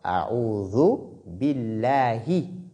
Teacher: lorsque le nom est précédé de kasra, comme dans ce cas, bi, ba ici porte kasra, alors dans ce cas, la lettre lam de Allah est lue avec finesse, avec légèreté